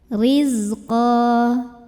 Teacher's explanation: ra-nya dibunyikan secara tarqiq karena barisnya kasrah, bacanya tipis. Riz, nah ini zai punya sifat yang tidak memiliki lawan, namanya sifat sofir, jadi berdesis ya, seperti suara lebah.